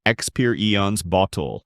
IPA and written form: ɪkˈspɪə.ri.əns ˈbɒt.əl (Experience Bottle)